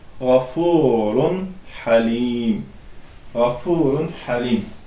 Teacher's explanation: Burda isə açıq şəkildə tənvin və nunu sakini oxuyuruq. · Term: izhar